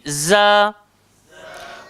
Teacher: Hujung lidah, langgar belakang, gigi bawah. Sifat dia kena berdesir. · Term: zai